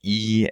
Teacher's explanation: The high front vowel E, as in heat